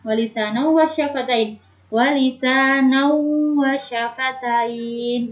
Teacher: Idgham bi gunnah. Cara membacanya harus mendengung.